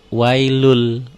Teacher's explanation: Itu jadi wailun, lun n-nya berubah menjadi l. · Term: idgham bila gunnah